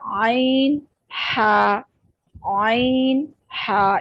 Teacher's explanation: ये दोनों हरूफ हल्क के दरमियान वाले हिस्से से अदा होते हैं। जुबान पीछे हल्क की तरफ मजबूती से ले जाते हुए बारीक आवाज में इनको अदा करेंगे। आइन हा, हा अदा करते हुए गले से हवा निकलती है, तो ये अदा होगा आइन हा, आइन हा। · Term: वस्ते हल्क